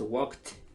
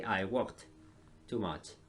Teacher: Muchas veces nadie escucha la T al final